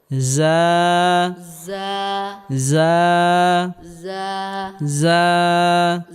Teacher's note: বাতাস বের হবে না, বাতাস বের হলে এটা সিন হয়ে যাবে।